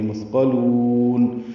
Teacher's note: مثقلون میں ثا ساکن ہے، اس پہ حمس ہوگا، نرمی سے ہی ادا ہوگا · مد عارض سکون ہے، لام کو لمبا کریں گے اور نون پہ اظہار ہوگا